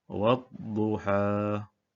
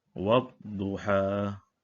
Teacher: Jadi di sini huruf alif lam ini tidak disebutkan bunyinya. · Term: idgham syamsi